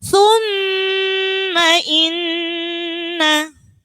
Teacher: Ini ada mim tasydid dan nun tasydid. Jadi cukup mendengung, nggak pakai thumma inna.